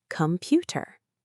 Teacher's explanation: Com-pu-ter. The O is not stressed, so it becomes schwa, ka. The E at the end is not stressed, so it becomes schwa, ta.